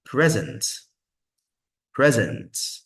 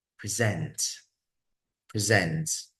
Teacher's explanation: when it comes to its verb form we're going to put the stress on the second syllable · When it's noun, the first syllable is the stressed. When it's verb, the second one is the stressed one.